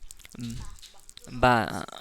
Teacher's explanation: दोनों होंठ मिलकर बा अदा होता है